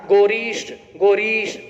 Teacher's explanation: गो को जल्दी बोल रहे हैं, शॉ को भी जल्दी बोल रहे हैं, लेकिन रॉ के पीछे बल लग रहा है बोलने में, इसका मतलब संधि यहीं पर है।